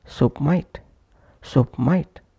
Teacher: Pushing P into M of might.